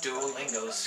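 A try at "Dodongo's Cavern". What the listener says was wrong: The Tongo! There's no L there.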